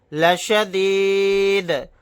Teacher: آیت کرنے کی صورت میں دال کو ساکن بنا کر پڑھیں گے اور یہاں پر قلقلہ بھی کریں گے. طوا ساکن ہے تو یہاں پر بھی قلقلہ کریں گے.